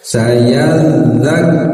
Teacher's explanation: Sayal za bertasydid tekan dan alirkan suaranya ya. Makhrajnya di ujung lidah menyentuh ujung gigi seri atas ya, dan biarkan mengalir, jangan sampai terputus suaranya.